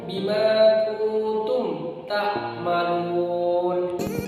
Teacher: Jadi mimnya itu dibaca jelas, tidak ada dengung, tidak ada samar, itu harus jelas membaca. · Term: idhar safawi